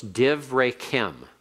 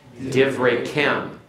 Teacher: Notice the accent is moved away from the resh to the ending.